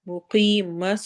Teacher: سواد کو موٹا پڑھنا ہے، موٹے حروف میں سے ہے